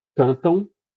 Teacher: O M ali está numa posição de semivogal, tanto que a gente chama aquele ão de ditongo nasal, ditongo decrescente nasal